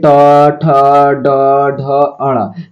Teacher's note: तो मूर्धा से ट, ठ, ड, ढ, अण, यानी ट वर्ग का उच्चारण स्थान होता है।